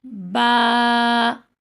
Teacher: فرق لگ رہا ہوگا، ایک کو میں منہ چوڑا کر کے پڑھ رہی ہوں اور ایک میں منہ چوڑا نہیں کر رہی. با، اس میں میرا منہ چوڑا ہوا ہے اور آواز باریک ہے